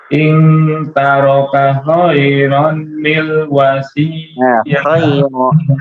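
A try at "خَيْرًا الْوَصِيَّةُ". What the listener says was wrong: Khairanil langsung khairanil wasiyah.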